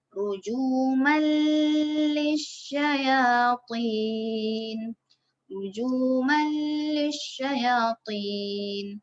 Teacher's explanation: Huruf lam dalam dua perkataan. Itu idgham bila gunnah. Bermaksud tanpa dengung lah. · Kan dalam dua perkataan kan ni. Cara bacaan kita masukkan huruf nun, masukkan tanwin ni ke dalam huruf lam.